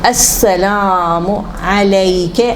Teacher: حرف شمسیہ, لام کی آواز نہیں نکلے گی